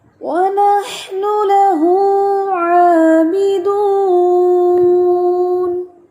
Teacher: اچھے سے ہونٹ گول کر کے پڑھنے کے بعد ہم نے عین پڑھنا ہے